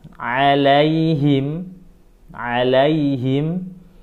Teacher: tenggorokan bagian tengah disempitkan tenggorokannya dipaksa keluar suaranya dikasih sedikit angin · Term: huruf A